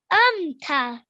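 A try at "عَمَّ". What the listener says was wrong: An, amta. So with the ayn, you really need to try and make the sound so it sounds different from the alif sound. So really work on that.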